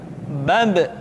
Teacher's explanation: Ketika mati, maka terdengar suara pantulan.